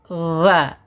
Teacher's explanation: Ujung lidah menyentuh ujung gigi seri. Ah keluarkan sedikit dza. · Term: dzal